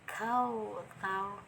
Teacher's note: ta ini keluar dari ujung lidah kita itu menempel pada ujung gigi seri, dua gigi seri bagian atas kita ya, ujungnya mengenai ujung lidah kita. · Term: makhraj ta